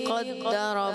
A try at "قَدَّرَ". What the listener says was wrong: قوف کی غلطی ہے، قوف کو موٹا پڑھتا ہے، انہوں نے قدرہ پڑھا ہے۔